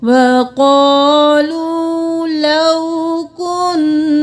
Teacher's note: نون پہ تشدید ہے تو غنہ کریں گے اور الف مدہ ہے ایک الف کے برابر کھینچیں گے کاف پیش نون کن نون زبر الف نا کن نا لو